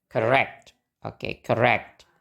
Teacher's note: suku kata pertama gak di stress berarti kita pakai schwa. Bacanya jadi correct.